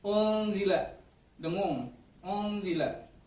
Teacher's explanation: Nun mati bertemu huruf z, dibacanya ngeng. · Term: ikhfa